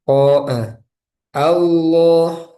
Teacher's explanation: Jadi a-nya tipis, lamnya tebal.